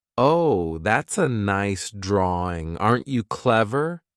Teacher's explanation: the way that adults talk to Children sometimes for some reason when adults talk to Children their voice goes up